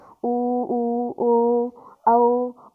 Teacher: तो देखो जब भी आप ऊ बोलेंगे ना, ऊ, तो आप अपने होठों को देखना गोल यानी कि गोल बन जाएंगे, एकदम वृत्त के समान रूप ले लेते हैं। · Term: वृत्ताकार स्वर